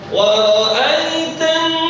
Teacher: nun bertasydid itu guna dengung, jadi ditahannya bukan hanya ditahan tapi dimasukkan ke dalam hidung ya.